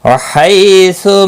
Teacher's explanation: یا لین ہے، تھوڑا نرمی کے ساتھ کھینچ کر ادا کریں گے، سو کو کھینچنا نہیں۔